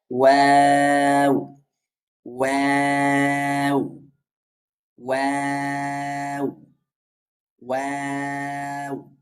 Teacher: ওয়াও, দুই ঠোঁট হতে ওয়াও উচ্চারিত হয়। প্রথমে উভয় ঠোঁট দুই দিকে ডানে এবং বামে কিছুটা ছড়িয়ে যাবে, উচ্চারণ শুরু হবে এবং দুই দিকে ছড়াবে। আবার উচ্চারণ শেষ হবে, আস্তে আস্তে উভয় ঠোঁট আবার গোল আকার হয়ে যাবে। · আবার উচ্চারণ শেষ হবে, আস্তে আস্তে উভয় ঠোঁট আবার গোল আকার হয়ে যাবে। গোল আকার হয়ে শুরু হবে, দুই দিক থেকে উভয় ঠোঁট ছড়িয়ে যাবে। দেন হচ্ছে উচ্চারণ শেষ হতে হতে আবার উভয় ঠোঁট গোল আকার এসে ধারণ করবে।